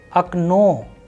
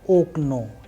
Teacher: But the sound is not oak no it is ano simply because the rule of udaria or the stress is falling on the second vowel and that is why the sound of first vowel o is changing into a so not oko.